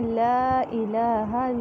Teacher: لا الہ لا الف مدہ. الہ یہاں پہ لام پہ کھڑا زبر ہے اسے لمبا کریں گے. ہا کو لمبا نہیں ہونے دینا کیونکہ صرف زبر ہے.